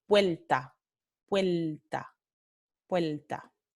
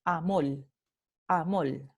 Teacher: es la lateralización de la vibrante simple · vibrante simple, final de sílaba, se lateraliza. Lateraliza significa que se vuelve en lateral.